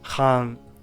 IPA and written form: xaːŋ (Khaan)